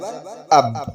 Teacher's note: جیسے با کا مخرج معلوم کرنا ہے، وہاں پہ حمزہ با زبر اب، جہاں پہ آواز رک رہی ہے جیسے دونوں ہونٹ ملا تو یہ سمجھ جائے کہ دونوں ہونٹ کے تری والے حصے سے با ادا ہوتا ہے